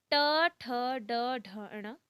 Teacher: टवर्ग का उच्चारण स्थान मूर्धा होता है